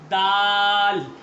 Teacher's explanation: ये जुबान की नोक जो है यह ऊपर के अगले दो दांतों पर लगाएंगे तो आप डाल अदा कर सकते हैं